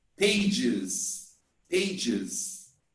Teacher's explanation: the e s is pronounced like e z if the verb ends in s z s h c h j